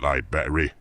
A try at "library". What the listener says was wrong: Yeah. You're still saying it wrong. There's 2 R's in there. I just told you this.